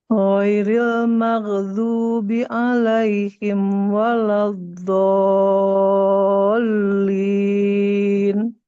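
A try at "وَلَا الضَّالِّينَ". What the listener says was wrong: Waladdallin. Gak perlu digenjot ya. Dol, enggak. Waladdallin. Didatarin aja.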